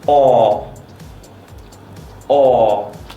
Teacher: for the long or you have your mouth slightly relaxed but still have a tight circle and have your tongue completely out of the way or or and for the short one you say much faster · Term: long aw